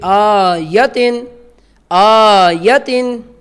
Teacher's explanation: حمزہ کے اوپر کھڑی زبر ہے، اسے لمبا کیا جائے گا ایک حرف مدہ کی مقدار کے برابر، اور یا کے اوپر کھڑی زبر نہیں ہے، یا کو نہیں لمبا ہم کریں گے، ایسے نہیں پڑھا جائے گا۔